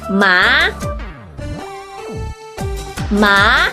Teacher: From the tonal mark, you can see the tone rises from the middle to the top. So you need to raise your pitch to the highest level to pronounce the second tone.